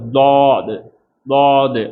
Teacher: இது தா. நாவினுடைய முழு வாயையும் பயன்படுத்தி நாவினுடைய ஓரத்தில் பயன்படுத்தி வரக்கூடிய ஒரு எழுத்து